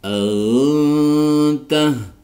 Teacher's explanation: Antah di sini ada nun sukun bertemu dengan tak dibaca ikhfa hakiki, jadi disamarkan disertai dengung.